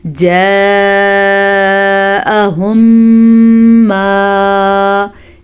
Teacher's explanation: मीम साकिन के बाद अगर दोबारा मीम मुतहरिक आ जाए तो दोनों मीमों को आपस में मिला देते हैं, गुन्ने के साथ मिलाते हैं। इसका गुन्ना दोनों इनका मीम का तलक होंठों से है, इसीलिए इसको शफ़वी कहते हैं। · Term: इदगाम शफ़वी